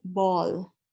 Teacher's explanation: the back end of the vowels tend to sound rounded, ball, moon, oh, oh, ah, something like that. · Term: round back vowels